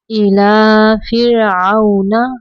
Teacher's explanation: را ساکن کے پیچھے حرف کے نیچے زیر ہے، اس لیے ہم را کو باریک پڑھیں گے